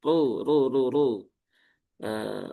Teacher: Ru dengan cara menaikkan pangkal lidah. Di sini haknya juga dibaca 2 harokat. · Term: ro yang berharokat dhammah